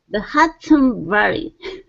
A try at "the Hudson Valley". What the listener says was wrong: okay very nice very nice